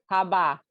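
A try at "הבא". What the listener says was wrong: Don't add another vowel. Haba. Not haba. It's haba.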